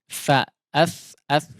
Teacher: Huruf tha ya seperti huruf dzal, ujung lidahnya keluar melewati gigi sedikit ya, seperti mau kita gigit ya